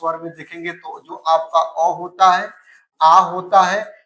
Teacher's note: अगर कंठ की बात कर ले दोस्तों तो कंठ आ अगर स्वर में देखेंगे तो जो आपका अ होता है आ होता है इनका उच्चारण स्थान आपका कहां से होता है दोस्तों तो आपका कंठ से होता है